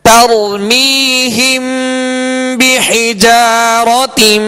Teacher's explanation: ترمیہم بحجارة من سجيل ترمیہم، یا را ساکن سے پہلے زبر ہے تا پر، را ساکن سے پہلے زبر ہے، لہذا را کو پر پڑھیں گے، مگر اس بات کا خیال رکھیں کہ را کو پر کرتے ہوئے تا پر نہ ہو، ترمی نہ ہو، تر پہلے تا باریک ہوگی پھر را پر پڑھا جائے گا